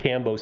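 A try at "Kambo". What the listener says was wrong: Cambo. With a K.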